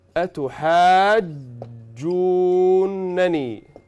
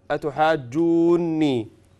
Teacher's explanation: these two noons are merged and they become أتحاجوني. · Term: إدغام